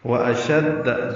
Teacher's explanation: واشد جلدی پڑھنا ہے، شین کو دال سے ملانا ہے